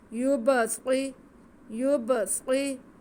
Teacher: یب، یب، آگے صاد کے نیچے زیر ہے، صاد حروف مستعلیہ سے ہے اور اس کو سٹی کی آواز کے ساتھ بھی پڑھتے ہیں. یبصری، یبصری، آگے را پہ پیش ہے، را پر پڑھا جائے گا اور ساتھ میں واو ساکن ہے اور را کی آواز کو کھینچیں گے بھی کیونکہ واو مدہ ہے.